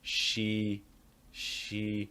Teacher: places emphasis on the word she how does he do that he holds the vowel longer and he also raises the pitch a little bit higher